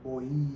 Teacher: O O ele é mais longo então ele é base da sílaba e por isso ele vai ser caracterizado como uma vogal e o i como uma semivogal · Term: ditongo